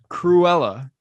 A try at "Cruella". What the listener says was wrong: Because you really speed it up and just skip the U.